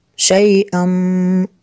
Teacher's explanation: تنوین کے بعد میم ہے حروف المعلوم میں سے، یہاں پہ بھی ادغام ہوگا، اس لیے یہاں پہ غنہ کریں گے